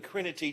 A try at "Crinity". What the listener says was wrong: Yeah, pretty close. It's Crinity with the accent on the middle syllable, but yeah, glad to be here.